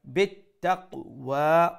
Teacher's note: wa has standing fatha we'll stretch it one alif long